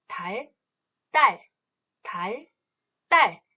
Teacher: 이 경음의 경우는요. 음 높이가 높아집니다.